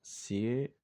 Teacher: Porque I es una vocal cerrada y E es una vocal abierta y están juntas en una sola sílaba. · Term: diptongo